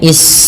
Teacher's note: alirkan nafas ketika melafalkan sin karena sin punya sifat hames